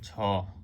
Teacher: ঝ বলার সাথে সাথে একটু বাতাস বেরিয়ে যায় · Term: মহাপ্রাণ